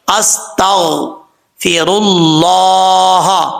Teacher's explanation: اللہ کے نام سے پہلے پیش ہو تو اللہ کا نام پر پڑھا جاتا ہے، یعنی موٹا پڑھا جاتا ہے · سین حروف صفیرہ میں سے، سیٹی کے ساتھ پڑھا جائے گا۔ غین حروف مستعلیہ میں سے، پر پڑھا جائے گا